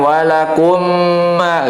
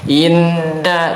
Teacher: Maka makhraj mim itu tetap di khayshum, makhraj nun tetap di ujung lidah, tapi gunnahnya, efek dari pengucapan mim dan nun, gunnah yang dipanjangkan itu dia akan masuk makhraj khayshum ya, masuk makhraj rongga hidung